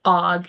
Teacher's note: an example of that would be something called initial consonant deletion, like if they were saying og instead of dog